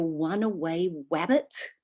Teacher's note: some very common pronunciation problems are a w for r